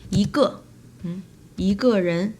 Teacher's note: change E to rising tone, which is the second tone